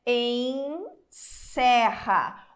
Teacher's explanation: o primeiro e é fechado e o segundo e é aberto